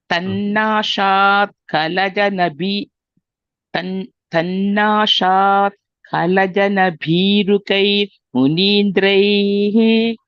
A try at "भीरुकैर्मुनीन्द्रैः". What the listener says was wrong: Bhirukair Munindrai. The ir should be heard. Bhirukair Munindrai.